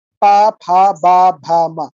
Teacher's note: এই পাঁচটা বর্ণ উচ্চারণ করার সময় ঠোঁট দুইটা পরস্পরের সাথে লাগে, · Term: ওষ্ঠবর্ণ